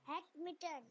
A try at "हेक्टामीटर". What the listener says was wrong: हाँ, हेक नहीं, हेक्टा, HEK, हेक, TA, हेक्टामीटर।